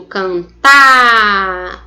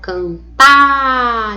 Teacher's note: o tá é indicativo de sílaba mais forte e é a última. Então, eu vou chamar esta palavra de uma palavra oxítona.